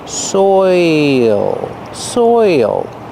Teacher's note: your mouth has to open a little bit to make the dark L and there's an extra sound